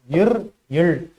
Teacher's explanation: இர் இல் மேல் வாய் நாக்கின் நுனியை வருடுவதால்